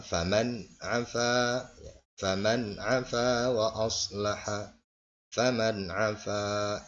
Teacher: Jadi tidak dibaca dengung, ya, tapi dibaca jelas karena nun mati menghadapi huruf idhar. · Maka ada bacaan idhar di sini, ya, idhar, baca jelas, ya. Ini pada nun mati menghadapi huruf ain, ya, menghadapi huruf ain, dibaca jelas. Ain adalah salah satu huruf idhar.